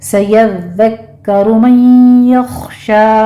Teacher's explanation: दाल को आपने सिर्फ तशदीद अदा करनी है, इस पर सीटी की आवाज़ नहीं आनी चाहिए, इसको नरमी से अदा करना है · काफ के ऊपर भी तशदीद है, सख्ती से अदा कीजिए। आगे मन यख्शा में नून साकिन का कायदा इदगाम अल गुन्ना होगा, खौ को पुर पढ़ना है